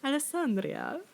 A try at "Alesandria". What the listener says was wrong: You don't roll the R.